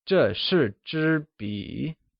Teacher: where 笔 is pronounced using a falling, rising tone, meaning pen